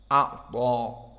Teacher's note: A'ta, maka dia ta mufakhomah. Dibaca dengan penuh udara di mulut kita, dan juga lisan cenderung naik kepada atas.